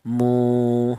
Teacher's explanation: Kemudian ya'lamun, di sini ada mu, yaitu ada wawu mati, di mana wawu mati ini didahului huruf yang berharokat dhammah, dibaca matobi, panjangnya 2 ketukan